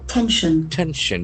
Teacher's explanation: the accent falls on the first syllable